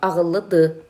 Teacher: Bu şəkilçinin tələffüz zamanı son samit tələffüz olunmayacaq. Məsələn, yazılır ağıllıdır, amma tələffüz olacaq ağıllı dı.